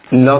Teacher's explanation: ल को हम लोग पार्श्विक कहते हैं